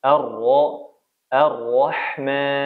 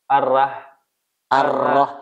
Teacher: dibaca tidak dengan menebalkan huruf ro